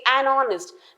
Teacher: though H is a consonant it is silent here and the pronunciation is O and not Hest and an hour